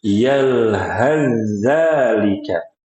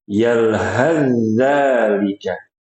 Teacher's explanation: Wasal itu kita lanjut Pak enggak berhenti. Sehingga huruf tsa yang sukun diidghamkan, dileburkan ke huruf dalal. Makanya dinamakan dengan idgham mutajanisain.